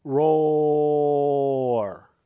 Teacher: it raises the middle of the tongue to the soft palate, and at that point changes the way the vowel sound works, so that roar and hobo really aren't that closely related.